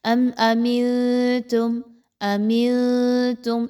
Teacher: یاد رکھیے یہاں پر آپ نے نون ساکن پر نون کی جو آواز ہے اس کو مخفی کرنا ہے، چھپانا ہے، اور تھوڑا سا ناک میں آواز کو لے کر جانا ہے، اور نون کی آواز کو کلیئر نہیں پڑھنا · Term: اخفا